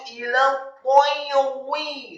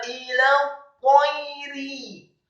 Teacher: Ro-nya dibaca tipis, kasrah cukup satu harokat